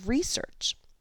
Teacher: We can see the stress mark here indicates that the first syllable re is stressed a little more loudly and a little more slowly as in research.